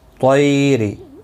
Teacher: طی یا لین ہے، تھوڑا نرمی کے ساتھ کھینچ کر ادا کریں گے.